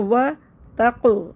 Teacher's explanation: تا کو موٹا نہیں کرنا طا بن جائے گا تا کو باریک کرنا ہے